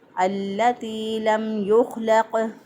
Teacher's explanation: خوا کو موٹا پڑھا، اسی طرح قاف کو بھی موٹا پڑھا۔ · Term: موٹے حروف